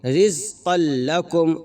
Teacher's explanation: وہی قاعدہ اپلائی ہوگا کہ قاف کے اوپر تنوین ہے اور تنوین کے بعد حروف یرملون میں سے لام آ رہا ہے تو بغیر غنہ کے ملا کر کے پڑھیں گے · قاف کو ڈائریکٹ لام میں ملا کر کے پڑھیں گے